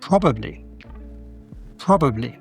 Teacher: Yeah, the schwa is in the middle.